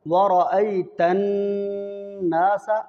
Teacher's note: ورأی، را کو موٹا ادا کرنا ہے، ورأیت الناس، را کو کیوں موٹا ادا کریں گے؟ اس لیے کہ را کے اوپر زبر ہے اور نون مشدد ہے، نون کے اندر غنہ ہوگا۔